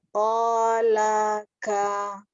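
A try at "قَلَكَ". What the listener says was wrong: Ya, jangan panjangkan Mi, pendekkan lagi. Qalaka. Qalaka. Buka Mi, jangan ko. Buka lagi. Pokoknya kita kalau berharokat fathah itu ya, jangan malas buka mulut. Tetap harus dibuka.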